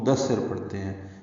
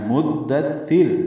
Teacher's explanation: یہاں پہ میم کو دال سے ملانا ہے، مدثر، سا کے نیچے زیر ضرور پڑھنی ہے، سا نرمی سے ادا ہوگا